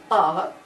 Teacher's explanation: when we get to r as in art the mouth is as wide as it ever goes in ordinary speech